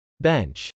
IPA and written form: bˈɛntʃ (bench)